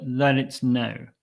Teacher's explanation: the tea can be quite soft or even lost completely